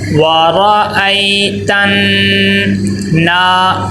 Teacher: وارا ای تن، تا نون کے ساتھ ملے گا، نون کے اوپر تشدید ہے اور نون مشدد ہے، نون مشدد کو ناک میں غنہ کر کے پڑھتے ہیں۔ وَرَأَيْتَ نا، آگے دیکھیں الف مدہ آ گیا ہے، الف خالی ہے اور اس کے پیچھے کیا ہے، زبر ہے، تو نون کو ایک الف کے برابر لمبا کر کے پڑھیں گے۔